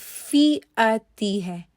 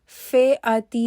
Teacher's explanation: کسرہ جو ہے اس کی آواز ای ہی ہو، اے نہ ہو